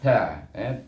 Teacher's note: Ta iaitu kita tekankan kita punya gigi kepada pangkal gigi kacip di sana.